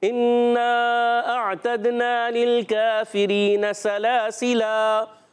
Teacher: وقف میں اس کو الف مدہ بھی پڑھ سکتے ہیں وقف کی صورت میں